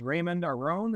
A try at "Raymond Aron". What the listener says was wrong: Raymond Aron. So you basically drop the D and Aron like Achu.